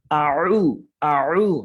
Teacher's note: আউ from the deep থ্রট, মানে আপনার গলার একদম মধ্যখান থেকে, যেখানে দেখবেন যে একটা ছোট একটা অংশ, এটাকে আলা জিহ্বা বলে অনেক সময়, এই অংশটুকু আপনি গলার সাথে টাচ করবেন।